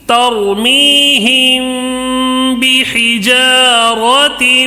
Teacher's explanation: میم ساکن کے بعد با ہے تو اخفاء شفوی ہوگا، تھوڑا غنہ کر کے پڑھیں گے